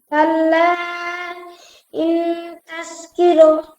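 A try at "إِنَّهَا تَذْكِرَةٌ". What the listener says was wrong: ইন্নাহা তাযকিরা। হ্যাঁ হ্যাঁ, ইন্নাহা আছে কাল্লা ইন্নাহা তাযকিরা,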